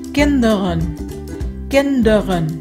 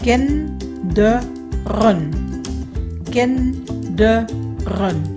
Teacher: chữ này nhấn ở âm đầu kin, cho nên hai chữ e ở hai âm tiết sau đều là stomme e